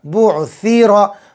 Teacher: سا کو اچھے سے نکالو، زبان کی نوک اور اوپر کے دانتوں کا کنارہ